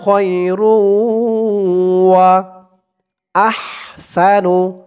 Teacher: রো গুন্না হবে, ঈদগামে বাগুন্না